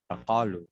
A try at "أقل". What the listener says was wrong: No, you have to say it very short. أقل.